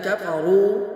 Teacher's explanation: کفروا کاف کو باریک پڑھیں گے، را کو پر کر کے پڑھیں گے